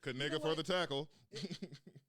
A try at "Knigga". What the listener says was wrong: I don't think that's how you pronounce it. Knigga. You know how the K is silent and no? Nigga. It's just nigga.